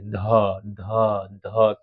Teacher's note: फिर से जीभ और दांत का संपर्क बन रहा है।